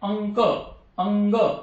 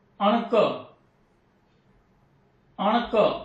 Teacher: म्हणजे काय लक्षात येतं की जेव्हा अनुस्वार दिलेल्या अक्षराच्या नंतर हे वर्ण येतील तेव्हा त्याचा उच्चार या वर्णाप्रमाणे होणार. म्हणजे क वर्गातले वर्ण ज्या ठिकाणी येतील तर त्या अनुस्वाराचा उच्चार ह्या वर्णाप्रमाणे होणार